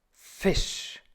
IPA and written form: fɪʃ (Fisch)